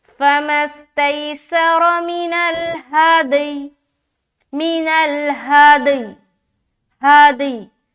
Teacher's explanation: اب یہاں پر دیکھیں کہ جیم ایک علامت بنی ہوئی ہے رکنے کا، تو اگر آپ یہاں پر رکتے ہیں تو یا کا جو زیر ہے وہ ہٹائیں گے اور سکون لائیں گے، تو اب جب ہم پڑھیں گے اسٹاپ کرتے ہوئے تو دال میں قلقلہ اور یا کو ظاہر کریں گے، یا کا جو زیر ہے وہ ظاہر نہیں ہوگا، جیسے کہ اسٹاپنگ کی صورت میں فَمَا اسْتَيْسَرَ مِنَ الْهَادِي، مِنَ الْهَادِي، ہادی، یعنی کہ یا کی جو آواز ہے نا بو ہلکی محسوس ہوگی کہ وہاں پر یا ہے، ٹھیک ہے۔